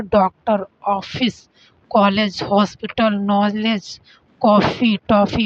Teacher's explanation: चंद्र के उच्चारण के समय हवा केवल मुख से निकलती है। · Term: बिंदु रहित चंद्र